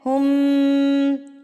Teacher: ابھی یہاں پر میں بتا دوں کہ میم مشدد، تو یہاں پر آپ نے غنہ کرنا ہے. ہم، ناک میں آواز کو لے کے جانا ہے ایک حرکت کے برابر